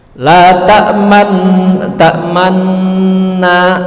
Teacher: total tetap 2 harokat, tapi 2 harokat itu dibagi dengan 3 fase. Fase masuk ke sukunnya, fase monyong sepertiga, fase balik kembali sepertiga. Itulah bunyi ismam.